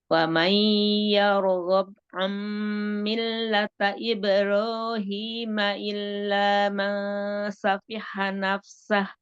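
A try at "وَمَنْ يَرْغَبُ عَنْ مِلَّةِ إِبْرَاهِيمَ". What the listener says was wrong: Nah, tak yargobu. Gobu bukan yargobe, tapi yargobu ada domah. Milati bukan milata.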